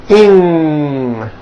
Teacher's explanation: Ing comes out of your nose. It's a combination of an N and a G, and it is found at the ends of words like ring and sing. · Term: NG sound